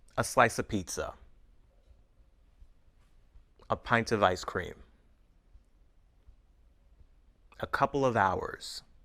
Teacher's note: notice the way we link of to the words around it